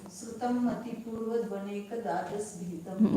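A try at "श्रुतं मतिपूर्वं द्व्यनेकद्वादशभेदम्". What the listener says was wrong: मतिपूर्वम अनुस्वार है वहाँ पर।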